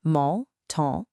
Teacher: Mon and ton are nasal. Your mouth should be kind of closed and rounded